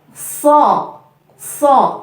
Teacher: pangkal lidah diangkat ya pangkal lidah lidah belakang diangkat